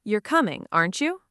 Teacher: if you're almost certain and you just want the other person to confirm, the tag falls.